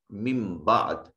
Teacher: نون ساکن کے بعد با حرف اقلاب ہے، اس نون کو چھوٹی میم سے بدل کر اس میم کو اس دوسری میم کے ساتھ ملا کر ادا کریں گے